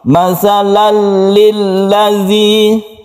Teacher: Tanwin ini masuk ke huruf lam bila gunnah. La gunnah itu tidak dengung, dengan tidak berdengung. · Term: idgham bila gunnah